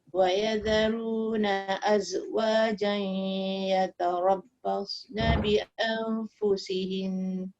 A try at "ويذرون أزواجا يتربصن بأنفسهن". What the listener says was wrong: Berhenti tu nun sabdu tu jangan sekejap sangat sebab dia bukan mati. Anfusihin. Dengung. Walaupun dia berhenti, walaupun dia sambung, dia tetap dengung tu 2 harakat. Bi'anfusihinna